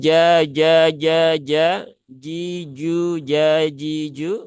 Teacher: bahwa yang naik itu adalah tengah lidah yang ada di di dalam sini bukan ujungnya